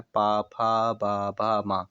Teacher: दोनों ओंठ आपस में टकरा रहे हैं जब ये वर्ण आप लोग बोलते हैं। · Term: ओष्ठ